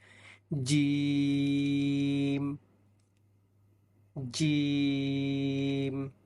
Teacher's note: মধ্যখান তার বরাবর উপরে তালুর সঙ্গে লাগাইয়া তিনটি হরফ উচ্চারিত হয় জিহবার মধ্যখান তার বরাবর উপরে যখন তালুর সঙ্গে লাগাবো তখন আমাদের উচ্চারণটা একটু শক্ত করে হবে